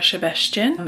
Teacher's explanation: when there is a singular S in a Hungarian word and it's not followed by a Z, then it is pronounced with a sh sound, and only when there is a SZ is it a s sound.